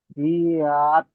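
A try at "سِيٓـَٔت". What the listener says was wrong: হ্যাঁ, আরো সি আরো টানতে হবে। সি আত।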